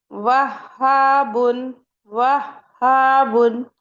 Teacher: हा में हमारे वोकल कॉर्ड्स ओपन रहते हैं।